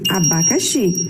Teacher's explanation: A sílaba mais forte é o xi, então então a sua posição fica na última posição, ok?